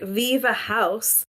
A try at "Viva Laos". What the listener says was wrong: or Laos. No, it's Laos. It's an L. Viva Laos.